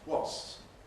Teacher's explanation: where the P is, well, not exactly missing, but not very forcefully present. Wasps, you know, some kind of lip gesture perhaps, but not much more than that. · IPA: [wɒs(p)s]